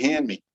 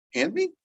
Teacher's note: we oftentimes will drop that D. That D just goes away.